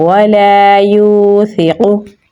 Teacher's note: قاف کو پر یعنی موٹا پڑھیں گے تو پڑھا جائے گا وَلَا يُوثِقُ۔